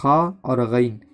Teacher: خا اور غین کا مخرج ہے ادنائے حلق، یعنی حلق کا وہ شروع حصہ جو منہ کے جانب ہو